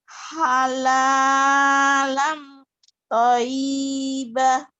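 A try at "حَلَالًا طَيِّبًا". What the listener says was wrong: Halalan. Toyiba. Y-nya berasa. Kenapa ada toyibah?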